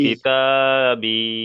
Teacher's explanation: আর ইয়া মাদ্দাকে একালিপ পরিমাণ টান দিয়ে পড়তে হয়